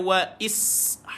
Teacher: sin sukun ada safir mendesir bunyi